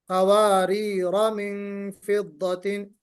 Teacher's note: اب قواریرہ میں بھی وقف اور وصل دونوں میں الف محذوف کر کے ہی پڑھیں گے